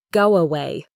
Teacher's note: For example, with the phrase go away, the word go ends with an O sound and away starts with an A sound. To connect them smoothly, we naturally insert a little W sound. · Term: intrusion